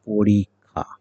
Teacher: সেই ক্ষীয়টার উচ্চারণ হয় ক এবং খ একত্রে উচ্চারণ করলে যা হয় তাই। এই শেষের আকারটি এই আকার, ক্ষয়ে আকার, কিন্তু ক এবং খ একত্রে করলে যেটি হয় সেটি হচ্ছে ক্ষীয় এর উচ্চারণ।